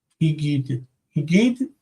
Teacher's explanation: I say hin gid. The nun assimilates and becomes higid.